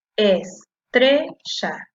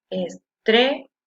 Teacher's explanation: La que suena con mayor fuerza es la sílaba que dice tre, la penúltima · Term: sílaba tónica